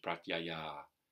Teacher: The H with a dot underneath at the end is dropped, so it becomes pratyayā. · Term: visarga